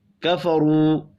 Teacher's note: را کو پر پڑھیں گے، واو مدہ کو 1 الف کے برابر کھینچ کر پڑھنا ہے